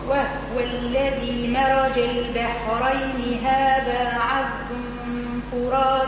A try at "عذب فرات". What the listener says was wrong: فرا ترقيق الفاء وتفخيم الراء مش عذب بون لا عذب بو بو رقق الباء وضمها قولي بو الباء الباء وحدها قولي بو بو عذب فرات